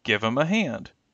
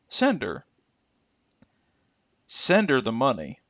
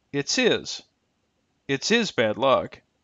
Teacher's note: When linked to a word with a final consonant or a vowel using a consonant glide, the H will disappear in order to facilitate a smoother connection between these two words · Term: disappearing H